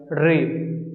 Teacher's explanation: री को हम लोग मूर्धन्य बोलते हैं क्योंकि इसमें हमें अपने जीभ को मोड़ना पड़ता है